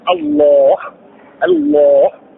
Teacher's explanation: لو سبق حرف اللام في لفظ الجلاله الفتح تلوناه مفخما